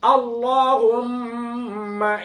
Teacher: মিমের গুন্নাটা দুই ঠোঁট লেগে যাবে